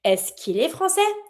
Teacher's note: We see that the comparison between the first one and the second one, there's a little change because the E from est-ce que can be removed if you have another vowel that follows it